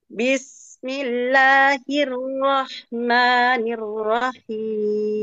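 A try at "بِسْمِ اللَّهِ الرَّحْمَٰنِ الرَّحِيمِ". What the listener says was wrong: Oh, itu lebih jelas ya.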